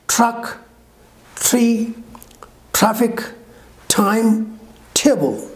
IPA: trʌk triː ˈtrafɪk tʌɪm ˈteɪbəl